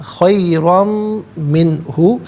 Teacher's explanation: میم کی آواز کو غننے کے ساتھ ادا کیا جائے گا